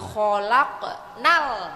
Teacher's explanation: Tidak ada sengau, tidak ada pantulan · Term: al-qamariyah